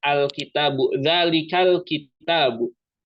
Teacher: ini dibacanya izhar. Jadi lamnya itu jelas.